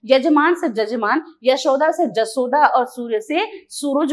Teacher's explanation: बघेली के प्रभाव से यज्ञ का य जो बदल जाता है जहाज के ज में